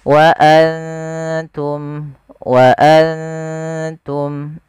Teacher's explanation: Ikhfa yang dekat dengan makhraj daripada huruf nunnya. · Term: ikfa aqrab